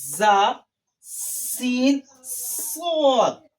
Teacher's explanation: 3 حروف ایسے ہیں جن کی آواز سیٹی کی طرح آتی ہے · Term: حروف صفیرہ